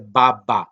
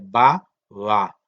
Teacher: Pero la segunda no. La segunda es fricativa porque no se llegan a cerrar los labios totalmente.